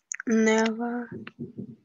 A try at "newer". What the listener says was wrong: Только newer. Не, never, а newer. Newer. Never это ER это окончание сравнительной степени, то есть когда что-то с чем-то сравнивают. ER. Newer, older, sweeter и так далее.